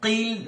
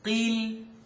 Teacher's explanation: Keep it, it's a qaf. قيل coming from behind the uvula or the soft palate.